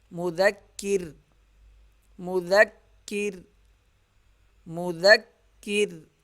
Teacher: اب جب وقف کریں گے تو وقف کی صورت میں را کو پتلا پڑھیں گے کیونکہ را ساکن ہو جائے گا اور اس را سے پہلے زیر ہے. زیر کی وجہ سے ساکن کی صورت میں را پتلا پڑھا جائے گا.